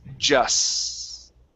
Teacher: There does not need to be a K there, so it's only an S. Okay, just like a regular Spanish S. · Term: S sound